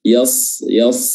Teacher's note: huruf shad, ya, tebal, dan ketebalannya tetap dimunculkan walaupun dia sukun